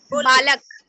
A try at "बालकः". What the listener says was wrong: देखिए बच्चों, मैंने पिछली बार भी बताया था कि इसे जब हम हिंदी में बोलेंगे तो कहेंगे बालक, लेकिन इसी को अगर हम संस्कृत में उच्चारण करेंगे तो बोलेंगे बालका। हाँ, बालका। हाँ, यहाँ पर बोलेंगे अपठत, क्योंकि बच्चों जहाँ पर पदों के अंत में आ लगा हुआ है, जैसे कि बालक का अगर हम वर्ण विच्छेद करेंगे तो देखिए अंत में आ आएगा।